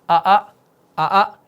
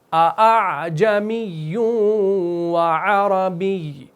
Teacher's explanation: پہلے والے حمزہ کو تحقیق کے ساتھ ادا کرنا ہے کیونکہ یہ محققہ ہے، اور بعد والے کے اندر آپ نے تسہیل واجب کرنی ہے. یعنی روایت کے مطابق اس میں تسہیل ہوگی، نرمی کے ساتھ ادا ہوگا تاکہ اس عین کا تلفظ ہو سکے. · تو ہم نے لازماً یہاں پر اس حمزہ کو نرم کرنا ہے، یعنی تحقیق اور ابدال کی درمیانی والی حالت کو اپلائی کرنا ہے، تب جا کے یہ عین آپ کا نکلے گا.